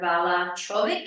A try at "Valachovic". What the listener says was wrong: Valkovic. It's spelled Valachovic, but it's pronounced Valkovic. Just ignore the second A. It probably is a ch.